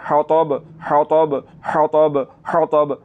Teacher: آپ نے اس ہا کو حلق کے درمیان والے حصے سے نکالنا ہے